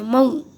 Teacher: واو ساکن سے پہلے زبر ہے اس لیے واولین ہوگا، اور واولین کو جو ہے وہ نرم پڑھیں گے اور مجہول نہیں پڑھیں گے، معروف پڑھیں گے